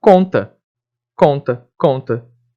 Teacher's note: o M e N indica então uma nasalização das vogais